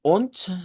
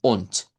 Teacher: la pronunciamos con letra T. Vea, se cambia la D por T y decimos on. Y esta u sería una u corta.